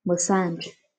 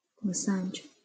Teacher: Cái từ massage này thì nó là trọng âm âm thứ 2